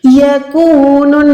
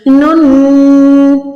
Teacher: गुन्ना मतलब आवाज़ को नाक में 1 सेकंड होल्ड करेंगे, नाक के बासे से, यानी यहाँ पर हमने गुन्ना करके अप्लाई करना है।